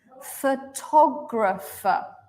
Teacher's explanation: toe is a reduced sound this means that in every single sound except the stress sound the sound has changed to become quick short quiet and the vowel has changed so originally we had three different vowels right o a o